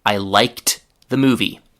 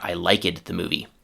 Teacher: the d or e d ending is pronounced t